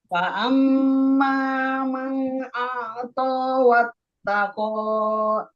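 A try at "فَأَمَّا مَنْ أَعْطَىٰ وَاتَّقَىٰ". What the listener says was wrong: Baik, koknya kepanjangan Ibu. Koknya dua harokat saja. Wattaqa.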